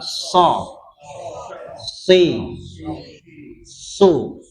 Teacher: so itu ya tidak berhembus ya, tidak ada hembusan nggak keluar so, jadi bukan syo.